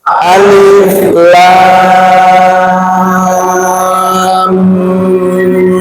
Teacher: 6 ketukan ukurannya. 6 ketukan, lamnya 6 ketukan, mimnya 6 ketukan, gunnahnya ditahan 3 ketukan.